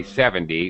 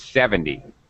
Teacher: much more stress in the beginning